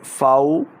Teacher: فا واو زبر فاو، واو ساکن سے پہلے زبر ہو تو واو لین، تو لین کو ہم جو ہے وہ لمبا نہیں کرتے